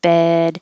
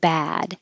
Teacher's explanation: your jaw is rather high kind of in the middle bed if your jaw is too low and your tongue is too low in your mouth it will sound like bad